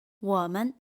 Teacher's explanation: The second word loses its original tone, men, and becomes neutral tone.